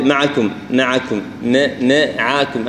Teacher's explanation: الميم والعين كلها مرققة